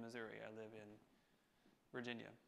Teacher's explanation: three syllables with stress on the middle